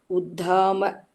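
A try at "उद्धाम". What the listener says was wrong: No Mahaprana. Uddhama. No Mahaprana. Uddhama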